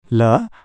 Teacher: हवा जीभ के किनारों से निकलना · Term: लैटरल